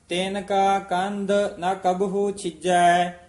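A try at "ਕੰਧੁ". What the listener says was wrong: ਕੰਦ ਨਹੀਂ ਕਹਿਣਾ। ਕੰਦ ਦਾ ਤਾਂ ਕੰਦ ਮੂਲ ਚੁਣ ਖਾਹੇ ਵਨ ਖੰਡ ਵਾਸਾ, ਇਹ ਕੰਦ ਹਾਂਜੀ। ਕੰਦ ਧੱਦੇ ਨਾਲ ਉਚਾਰਨ ਕਰਨਾ। ਕੰਦ ਦਾ ਅਰਥ ਹੈ ਸਰੀਰ ਹਾਂਜੀ।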